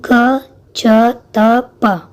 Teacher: जी हाँ, तो हमें बोलने से समझ में आ रहा है कि त शब्द का उच्चारण करने पर हमारी जो जीवा है वो दांतों पे आके लड़ती है। तो त शब्द का उच्चारण जीवा और दांतों के द्वारा होता है